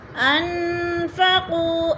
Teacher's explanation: انفقوا، ان نون ساکن آگے فا آ گیا ہے تو ادھر اخفا ہو رہا ہے، یعنی آواز کو ناک میں چھپا کر پڑھیں گے ، اور قو پہ وہ مدہ۔ ما انفقوا ولا جناح عليكم